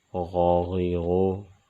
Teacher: غین بھی حروف حلقی میں سے ہے لیکن یہ حلق کے اس حصے سے ادا ہوگا جو منہ کی طرف ہے۔ غین زبر غا، غین زیر غی، غین پیش غو، غاغی غو۔